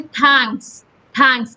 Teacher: के और एस के बीच में कोई वॉवल नहीं है। Then फिल्म, FILM, फिल्म, L और M के बीच में कोई भी वॉवल नहीं है।